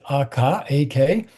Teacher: the third formant and the second formant come together as you approach the consonant, the velar closure. So it's sometimes called the velar pinch because the two formants pinch together, right?